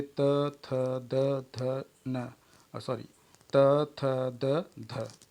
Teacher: इसमें जीभ की नोक ऊपरी दंत पंक्ति का स्पर्श करती है। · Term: दंत व्यंजन ध्वनियाँ